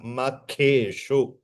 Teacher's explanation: ख is महाप्राण K is Mahaprana.